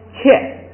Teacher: 啊变i是切，然后呢1声变4声是切